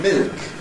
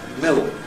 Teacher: when there isn't a vowel after it, then we get a Dark /l/, ([ ɫ ]), which is colo(u)red like sort of [ o ] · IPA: [mɪɫk]